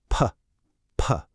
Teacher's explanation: Just a puff of air, right? No buzz.